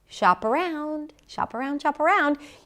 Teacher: The P becomes the beginning of the next word, and you know why - because the next word starts with a vowel.